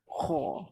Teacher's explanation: Bila kita sebut kha, dia tolak tau pangkal lidah. Pangkal lidah ternaik itulah dinama isti'la. Pangkal lidah terangkat ke atas.